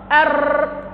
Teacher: التكرير هتكون الراء كده بالظبط أر كده، إنك تكرر أكثر من راء. ولذلك أنا قلت في البداية عليك بأنك تحذر من المبالغة في التكرير.